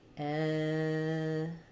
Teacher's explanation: In etiquette, we have first syllable stress. · My T is going to be flapped. It'll sound more like a D.